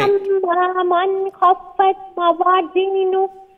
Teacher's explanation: this nun sakin will be pronounced with izhar, without any nasal sound, due to the letter coming, letter kha.